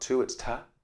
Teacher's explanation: the prepositions, for example, to is often schwa, so it's not to, it's ta.